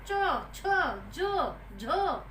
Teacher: इनका उच्चारण करते समय हमें अधिक ऊर्जा खर्च करनी पड़ती है और साथ ही हमें अपने तालव्य स्थान को भी स्पर्श करना होता है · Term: स्पर्श संघर्षी व्यंजन